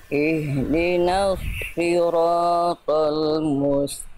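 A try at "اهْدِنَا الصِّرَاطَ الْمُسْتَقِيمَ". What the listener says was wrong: Pangkal lidahnya diangkat Bunda.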